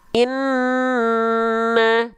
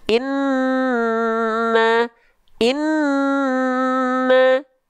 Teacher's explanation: Nun dan mim bertajdid dia baru harus ditahan dua harakat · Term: Nun bertasydid